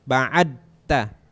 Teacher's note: Ta-nya ditempelin ke gigi, da-nya itu ditempelin ke langit-langit di belakang gigi atas.